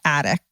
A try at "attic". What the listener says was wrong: Well, it's attic. There's no D. Attic.